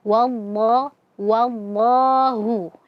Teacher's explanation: Nah, ketika ada lafzul jalalah kemudian sebelumnya ada huruf yang fathah maka lamnya kita baca tebal